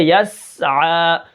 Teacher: اور عین کو ہم کیا کریں گے زور لگا کر پڑھیں گے اور اس کے اوپر کھڑا زبر ہے تو اس کو ہم کیا کریں گے ایک الف کے برابر کھینچ کر پڑھیں گے